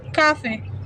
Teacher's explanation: French Origin stress on the second syllable